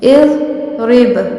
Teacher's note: جو زوا ہے وہ بھی ساکن ہے، لیکن وہ حروف قلقلہ نہیں ہے، اس لیے ہم اسے نہیں ہلائیں گے۔ اضرب، با ہلایا جائے گا۔